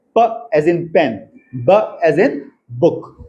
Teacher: Place of articulation मतलब ये प जब हम बोलते हैं तो जहां पे हमारे दोनों लिप्स हैं वहीं पर साउंड प्रोड्यूस हो रहा है। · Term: बलेबियल प्लोजिव